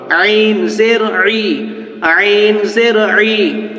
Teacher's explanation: আইনটি কণ্ঠনালীর মধ্য থেকে উচ্চারণ হয়